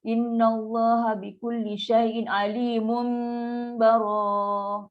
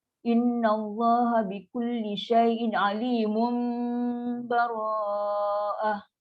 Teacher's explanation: Ini ada hukum iklab. Tanwin jumpa dengan huruf ba, iklab. So kena dengung nak sini.